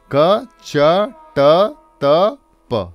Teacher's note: place यानी कि कहाँ से उच्चारण हो रहा है, तो आप अगर क वर्ग देखें तो क ख ग घ ङ से लेके क च ट त प पीछे से आगे आता है प्लेस ऑफ आर्टिकुलेशन